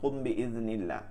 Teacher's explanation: ইকফায়ে শাফাবির হরফ একটি বা, মিম সাকিনের বামে বা আসলে ওই মিম সাকিনকে গুণনা করিয়া পড়তে হয়